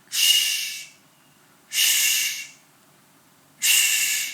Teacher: The gap between your tongue and the hard palate creates the friction for this sound. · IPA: /ʃ/